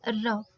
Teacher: इसे प्रकंपित व्यंजन भी कहते हैं या कांपता हुआ व्यंजन भी कहते हैं